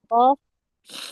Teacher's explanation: di pangkal lidah menyentuh langit-langit yang lunak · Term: Qof